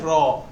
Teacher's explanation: জিহ্বার অগ্রভাগের পিঠ তালুর সাথে লাগিয়ে উচ্চারিত হয়